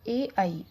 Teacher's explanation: ए आई का उच्चारण स्थान है कंठ और तालु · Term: कंठ तालव्य वर्ण